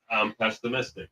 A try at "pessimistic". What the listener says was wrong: There's no T. Pessimistic.